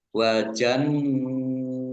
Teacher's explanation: nun tasdid dibaca gunnah ditahan 2 harokat. Wa jannatun nun fathah berdiri matobi'i panjang 2 harokat.